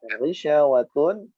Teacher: Ghisyawatun, harakat dhammatain bertemu waw, maka dibaca dengung, ya, idgham bi gunnah, ditekan yang lama. Ghisyawatu, mengikuti makhraj huruf waw, dua bibir kita harus berbentuk monyong.